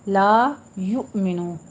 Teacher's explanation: لا الف مدہ ہے، منہ کھول کے ادا کیجئے 2 حرکات کے برابر ، یؤمنو تھوڑا سا جھٹکا دینا ہے حمزہ کے اوپر، لا